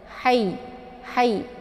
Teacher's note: Ini ha kecil, posisinya di makharijul huruf, tenggorokan bagian tengah ya. Hayy. Jadi sifatnya adalah hamas, ada desis anginnya ya.